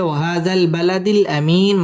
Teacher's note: মধ্যে আরজি তিন আলিফ টান দিয়ে পড়তে হবে